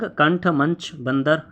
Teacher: अनुस्वार का उच्चारण कहाँ से होगा? नाक से होगा।